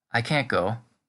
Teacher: The T on the end is completely gone. There's really only a difference in tone that differentiates the two versions.